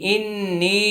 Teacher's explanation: প্রথমে ওয়াজিব গুন্না তারপরে তিন আলিফ টান